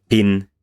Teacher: aspirated means that you use the release of the consonant to just breathe out strongly so you have this in english for example pin is aspirated